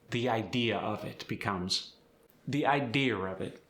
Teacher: I like the intrusive R. It just kind of comes out of nowhere.